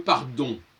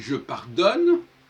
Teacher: Si je dis par exemple le pardon, on prononce le on. Si je dis je pardonne, il n'y a plus la nasale on.